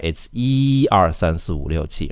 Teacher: When you're counting, E stays the first tone.